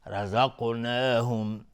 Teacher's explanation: رزقناهم، را حکمش استعلاء است و قاف از حروف استعلاء غلیظ تلفظ میشه و قلقله هم میخواد چون ساکنه